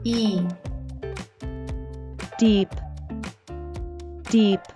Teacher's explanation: The Double E is pronounced as the long e sound which we produce by making our mouth wide like a smile while our tongue touches the sides of our teeth